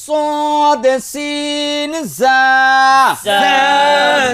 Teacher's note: জিব্বার আগা সামনের নিচের দুই দাঁতের আগার সঙ্গে লাগাইয়া